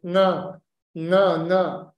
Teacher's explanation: this is actually a nasal quality of voice that happens in a guttural dysarthria.